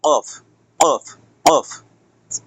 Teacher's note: ৪ number মাখরাজ জিহ্বার গোড়া তার বরাবর উপরে তালুর সঙ্গে লাগাইয়া ২ নক্তওয়ালা অফ অফ অফ।